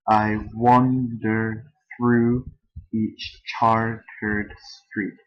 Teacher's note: the syllable stress pattern begins with the unstressed and then a stressed syllable, and that pattern repeats. One iamb is an unstressed and a stressed syllable. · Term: iambic tetrameter